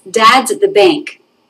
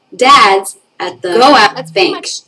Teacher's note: Dad's and bank are both higher in pitch. They are the stress words in this sentence.